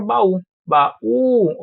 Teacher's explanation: eu tive a separação silábica isso aqui é um iato e a parte mais forte é o u a parte tônica